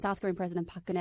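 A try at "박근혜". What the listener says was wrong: But you don't say park, you say bark. Why do you say bark?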